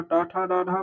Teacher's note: तो हमारा टा ठा डा ढा मूर्धन्य है।